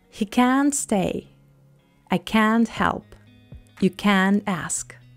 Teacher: When you say can't, pronounce the vowel sound with a nice long "a" sound, as in cat. Stress the can't, not the following verb. Barely pronounce the sound t, or don't pronounce it at all. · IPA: /æ/